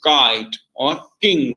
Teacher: produced by raising the back of the tongue to the soft palate